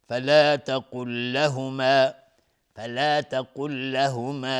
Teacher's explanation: فلا تقل لهما، لام بعدش لام ادغام متماثلین، ادغام متماثلین، ادغام مثل هم، لام و لام، لام اول ساکنه، لام دوم متحرک